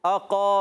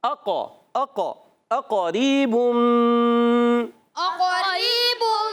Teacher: قاف کو موٹا رکھیں قاف پر زبر ہے حرکت کو نہیں کھینچیں گے